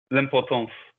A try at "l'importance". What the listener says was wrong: You micro-pausing, you go l'importance. Number one, it'd be la because of the NC, but it'd be l'importance. Don't put a pause between.